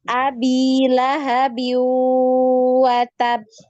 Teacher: monyong bibirnya dimonyongkan ketika masuk di waw ini monyong ya. Kalau cuman kita baca abilahabiu watab ini bunyinya beda.